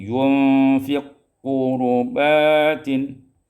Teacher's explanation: Pada ayat yang ke-99 yunfiqu qurubatin ibdalul qaf idghamul kaf fil qaf, diidghamkan qaf pada qaf menjadi yunfiq qurubatin.